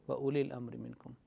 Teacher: Meme, sakin meme will be kept short because it's not followed by waw or ba. Or minkum here is ikhfa.